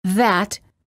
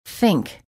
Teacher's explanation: there are two th sounds in English the voiced th as in that and the voiceless th as in think